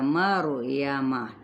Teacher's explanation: اسی طرح ہم نے ایک کنڈیشن دیکھی یعنی حالت را ساکن ما قبل فتحہ یعنی زبر تو یہ را پر پڑھا جائے گا